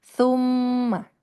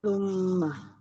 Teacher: ujung lidahnya ketemu dengan ujung gigi seri atas